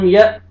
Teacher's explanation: یا زبر حمزہ جزم یا، جھٹکے کے ساتھ پڑھیں گے، حمزہ کو مجزم ہے